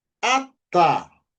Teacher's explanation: Sílaba tônica é a última sílaba. Ata. É assim que nós vamos ler.